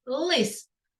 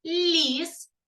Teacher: ліс і перше і друге слово починається з звуку л але в слові лист звук л твердий приголосний а в слові ліс звук ль М'який приголосний